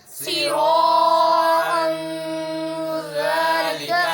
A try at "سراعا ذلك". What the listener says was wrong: سیرا کو زیادہ لمبا نہ کرو سراعا ذالک